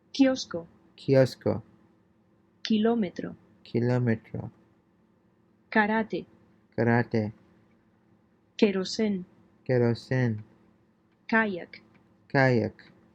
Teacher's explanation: The K is pronounced like an English K without the puff of air